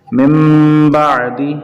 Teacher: نون کو میم سے بدلیں گے، نون ساکن کے بعد با آ گیا ہے